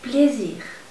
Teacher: La S toma un poquito la fonética de una Z.